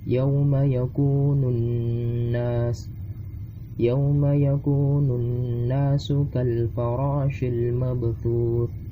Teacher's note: alif lam di sini dibaca sebagai alif lam syamsiyah karena alif lamnya tidak dibaca.